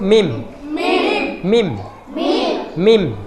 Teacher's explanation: ketika kita mengucapkan huruf mim bibir atas dan bibir bawah menempel